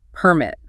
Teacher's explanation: The noun is the actual document, the license, permit. Stress is on per.